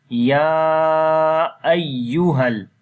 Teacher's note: ya we long almost 3 to 4 seconds due to madde munfasil. Munfasil meaning is that the hamza is a separate.